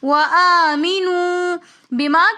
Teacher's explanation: بما کے اندر مد منفصل ہونے کی وجہ سے ہم نے اس کو 3 فنگرز کی مقدار کھینچ کر پڑھا